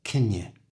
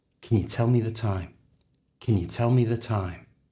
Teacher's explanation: we're going to change the vowel sound, the oo in you, with the schwa sound. So it becomes y.